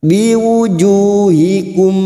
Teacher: dua harakat kita panjangkan biwujuhikum mim sukun bertemu wau Idhar sfawi mim sukun dibaca jelas tanpa mendengung